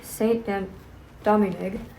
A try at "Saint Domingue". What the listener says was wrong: Domingo. I'm sorry. There's no ni. Domingo. Yeah, Domingo.